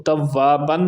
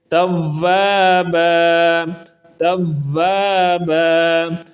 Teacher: جب بھی دو زبر والی جگہ آئے اور اس کے بعد وقف آئے یعنی سٹاپ آئے تو وہ دو زبریں الف بن جاتی ہیں، تو توابن نہیں پڑھیں گے۔